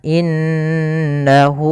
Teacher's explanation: pada lafal inna ada bacaan gunnah, yaitu cara membacanya an-nya ditahan. Innahu. Kemudian pada lafal hu ada mad silah qasirah, itu adanya hak dhamir bertemu dengan huruf waw kecil.